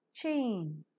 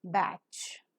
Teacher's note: the air that is held up in the oral cavity is slowly released with a slight friction the vocal cords are drawn wide apart to let the air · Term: affricate